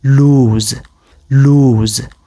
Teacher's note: You would definitely notice some sort of vibration in your neck while pronouncing it. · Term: Z sound